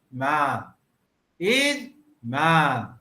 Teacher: So while saying man, the voice falls. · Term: intonation